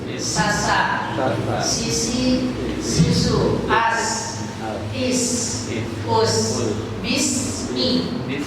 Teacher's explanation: Kalau sin itu keluar dari ujung lidah karena ujung gigi seri atas dan bawah.